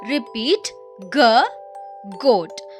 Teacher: A hard, deep sound from your throat.